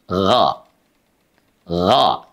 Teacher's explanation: Huruf ghain itu karakternya dia, ya, dia memiliki sifat mengalir suaranya, kemudian juga menebal karena terangkatnya pangkal lidah.